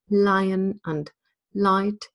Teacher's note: Remember that British English has a light and a dark L. The light L tends to be used at the beginning of words like lion and light